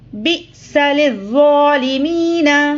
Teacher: بِئْسَ حمزہ ساکنہ کو جھٹکے سے پڑھیں گے، با حمزہ زیر بی، بِئْسَ لِلظَّالِمِينَ۔